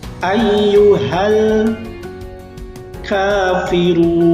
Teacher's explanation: Ka itu mad tabi'i, panjangnya adalah 2 harokat ya anak-anak.